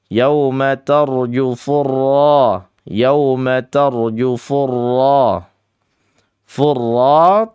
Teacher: Sifatnya huruf ra itu adalah takrir ya bergetar. Namun getarannya tidak sampai lebih dari tiga kali ya.